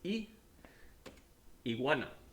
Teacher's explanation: when i say iguana my g kind of gets like swallowed in the middle of that word and that is kind of common in several countries once again